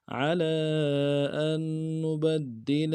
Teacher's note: علی میں عین کو موٹا کرنا ہے، لام کے اوپر کھڑا زبر ہے، مد عارض ہے، دو الف مقدار میں کھینچیں گے۔